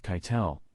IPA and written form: ˈkaɪ̯tl̩ (Keitel)